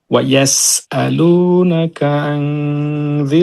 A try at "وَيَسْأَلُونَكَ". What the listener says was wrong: একটু ভাই, আইনটা একদম প্রপারলি আসতেছে